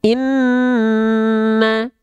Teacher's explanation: Inna, ini nun bertasydid. Dia ketika bertasydid an-nya ditahan dulu 2 harokat baru masuk ke bunyi harokatnya.